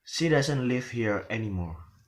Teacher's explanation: so the word anymore is falling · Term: falling intonation